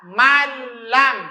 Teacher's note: bunyi dari nun ini dileburkan, dimasukkan ke huruf lam. Maka terkesan nunnya hilang. Dari man lam dibaca malam. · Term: idgham bilagunnah, idgham bila guna